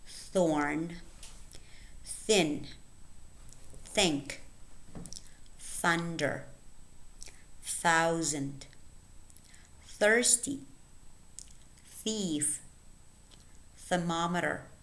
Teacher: the voiceless inter dental fricative occurring at the beginning of words